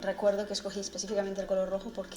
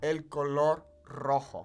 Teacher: Let's talk about rolling the R's here, because obviously you're hearing roll her R's quite a bit.